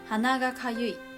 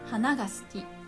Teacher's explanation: nose had a flat accent and flower had ending high accent